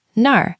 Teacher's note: And nar means where. It has that pirate R sound at the end.